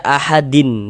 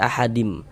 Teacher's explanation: Bunyi nun sukun atau bunyi tanwinnya itu dimasukkan ke dalam huruf idgham bi gunnahnya. Jadi bunyi tanwinnya dimasukkan ke dalam huruf mim, kemudian digunnahkan.